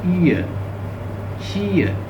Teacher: ई से स्टार्ट होगी, सिट जैसे नहीं होता